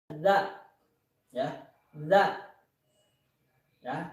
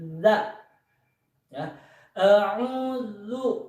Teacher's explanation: ujung lidah yang menempel pada ujung gigi seri atas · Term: huruf zal